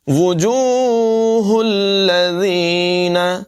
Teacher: ذال جو ہے اس میں سیٹی کی آواز پیدا نہیں ہوگی. وجوہ الذین، زینہ نہیں پڑھیں گے.